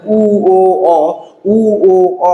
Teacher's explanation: এই ধ্বনিগুলো উচ্চারণের সময় দেখেন ঠোঁট আবার কেমন থাকছে, ঠোঁট গোলাকৃত হয়ে যাচ্ছে